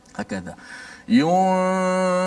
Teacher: jangan terus tekan fa dengan kuat. Dengung dulu. Habis tempoh dengung dipanjangkan, baru kita menekan betul-betul makhraj fa. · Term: ikhfa hakiki